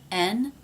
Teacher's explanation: The N sound is made when the front part of the tongue reaches up and touches just behind the front teeth.